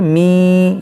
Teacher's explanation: देखिए नाक में आवाज़ जा रही है, मी, यह है इदगाम।